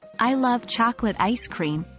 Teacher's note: the words love chocolate and ice cream are stressed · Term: sentence stress